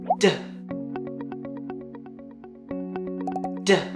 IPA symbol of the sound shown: d